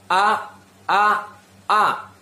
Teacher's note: pengucapan huruf alif ini yaitu berasal dari tenggorokan yang paling bawahnya